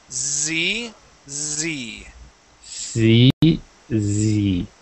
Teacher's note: that is the voiced s sound